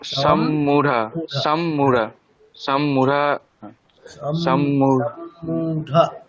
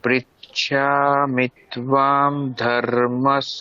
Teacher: দুটো ম যুক্তাক্ষর হিসেবে আছে, তাহলে একটা ম আগের সাথে হয়ে যাবে সম মূঢ়া এরকম